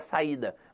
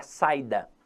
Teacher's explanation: aquele I ali não é uma semivogal que ele é na verdade uma vogal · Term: iato